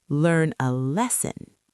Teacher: The stress is on lesson.